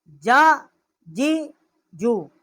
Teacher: جیم کا جو مخرج ہے وسط زبان اور اس کے مقابل اوپر کا تالو جو ہے اس سے یہ حروف جو ہیں وہ ادا ہوتے ہیں۔